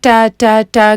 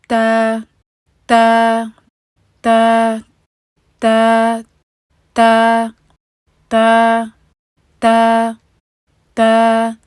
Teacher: اس میں وہ انگلش والی ٹ کی آواز نہ آئے۔ کچھ لوگ کرتے ہیں ٹا ٹا ٹا کر کے پڑھ رہے ہوتے ہیں، تو یہ اگر آپ اپنی زبان کو بالکل صحیح مخرج پہ رکھیں گے تو تب یہ والا پرابلم بھی نہیں ہوگا۔